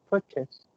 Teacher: the stress should be the first syllable and then the second syllable is not chase